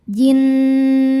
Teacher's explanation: Karena ada nun yang bertasydid. Cara bacanya didengungkan, tahan dengungannya kurang lebih dua harakat sampai ada getaran masuk hidung. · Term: wajibul ghunah